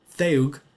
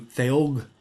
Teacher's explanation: breaking into two separate monophthong vowels